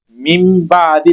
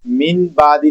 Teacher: यहां पर अब हम नून की आवाज नहीं पैदा करेंगे बल्कि मीम की आवाज पैदा करेंगे। मी बादी पढ़ा जाएगा। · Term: इकलाब